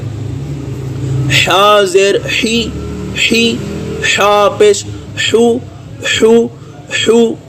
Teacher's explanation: حی حا پیش حو، حو حو، گلے کے درمیانی حصے سے ادا ہوگا